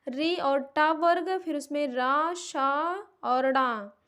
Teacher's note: इन सब का उच्चारण स्थान मूर्धा होता है